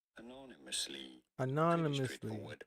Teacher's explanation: You do want to Anonymously. stress on the second syllable, on the no syllable.